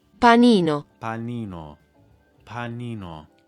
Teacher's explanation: So this is going to affect your rhythm because every single syllable in the word is going to be pronounced for about the same length of time. It will still have emphasis, but in terms of length, you want to make sure that it stays a lot more equal than what you find in English. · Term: syllable timed